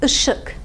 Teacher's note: this is a back unrounded vowel